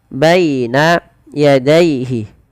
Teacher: Lafal baina dan daihi ini kedua-duanya dibaca dengan bacaan lin. Yaitu dengan melembutkan bunyi suara ya-nya dilembutkan.